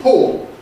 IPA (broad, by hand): pɔo